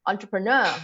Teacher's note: it's a French word so the stress is on nur